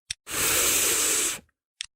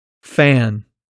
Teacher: the f is a continuous sound so you should be able to stretch it out like this now let's try saying it here are a few